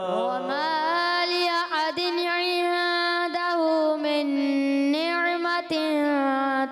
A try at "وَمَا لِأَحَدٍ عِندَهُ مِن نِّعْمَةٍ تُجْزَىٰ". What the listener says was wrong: اس میں دن تھوڑا سا نون ہلتا ہوا محسوس ہو رہا تھا، تو وہاں ہلنا نہیں چاہیے، ساکن حرف کوئی بھی ہلنا نہیں چاہیے جب تک حرف قلقلہ نہ ہو، ٹھیک ہے؟